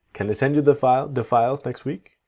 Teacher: when you have the word 'the' very quickly, it sounds like a duh